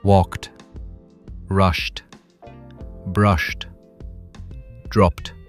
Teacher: it feels like a sharp stop at the end. My throat doesn't vibrate at all. It just pushes air out.